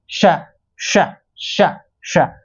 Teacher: घर्षण होने के कारण यह संघर्षी व्यंजन कहलाते हैं